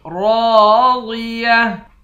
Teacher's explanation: را اور ضاد دونوں کو موٹا پڑھیں گے